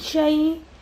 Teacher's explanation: اس کو یائلین کہتے ہیں جب یائے ساکن سے پہلے زبر آئے، اس کو ہم جھکا کر پڑھتے ہیں اور کھینچ کر بھی نہیں ادا کریں گے۔ اعوذ باللہ من الشئی، اس کو شائع نہیں پڑھیں گے اور کھینچیں گے بھی نہیں۔